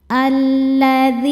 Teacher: Lam sukun dan lam fathah. Lam yang sukun tidak dibaca. Masuk langsung ke lam kedua. Alladzina dzi hukum tajwidnya adalah mad thobi'i zohiri sebab ada ya sukun sebelumnya baris kasrah. · hukum tajwidnya adalah mad thobi'i zohiri sebab ada ya sukun sebelumnya baris kasrah. Cara bacanya panjang dua harakat. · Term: alif lam syamsiyah